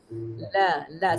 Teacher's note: huruf lam tepi tepi hujung lidah melencung ke gusi hadapan sebelah atas sama ada kiri atau kanan